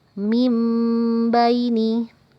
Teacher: Hai jawabannya adalah mimbaini mimbaini ada nun sukun atau non mati bertemu dengan huruf ba maka berubah bacaannya menjadi huruf mim dan kita panjangkan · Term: bacaan iqlab